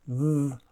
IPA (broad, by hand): ð